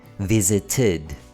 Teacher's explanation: If the base word ends with the sound d or t, as in visit, we pronounce the ed as id.